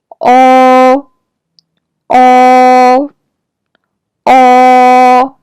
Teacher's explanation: your lips are round when you pronounce it. Your tongue is pulled back and raised up.